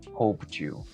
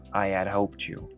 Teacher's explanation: cuando tenemos una T más un sonido de Y, que es Y, estos dos sonidos se van a unir y van a crear el sonido de SH